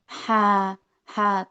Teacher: posisinya itu di tengah tenggorokan ya